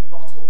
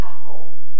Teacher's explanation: With dark L, Cantonese speakers use a vowel instead of a dark L sound.